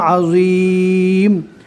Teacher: ذو کو جس طرح زا پڑھتے اسی انداز میں پڑھیں گے، لیکن زا کو نارمل اور ذو کو پور پڑھا جاتا ہے